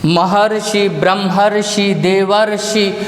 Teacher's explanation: जब हम इसका उच्चारण करेंगे तो अर का उच्चारण होगा, इस री का लोप हो जाएगा, री जो है अर में परिवर्तित हो जाएगा।